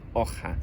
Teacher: It's become a more throaty consonant sound like in hoja, a bit like the CH in loch.